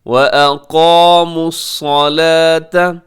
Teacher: اس میں قاف موٹا رکھیے گا، اس کو باریک نہ کیجیے گا